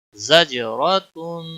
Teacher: جیم پر کلکلا ہوگا، را کو موٹا پڑھیں گے کیونکہ اس کے اوپر زبر ہے